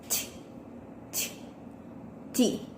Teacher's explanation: With manner of articulation, stop, and place of articulation, alveolar.